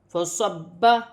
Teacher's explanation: با مشدد ہے، اسے جمع اور سختی کے ساتھ پڑھا جائے گا